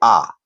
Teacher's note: विवृत स्वर एक ही होता है वो होता है आ यानी पूरा मुख खुला हो